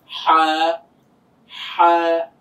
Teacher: গলা থেকে একটা চাপ দিয়ে হালকা একটা বাতাস বের হচ্ছে